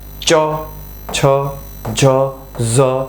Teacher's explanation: જીભ છે ઈ તાળવાને અડે દાંત દાંત થી જરાક ઉપર તાળવું એ તાળવાને અડે અને જે વ્યંજન બોલાય એને કહેવાય તાલવ્ય વ્યંજન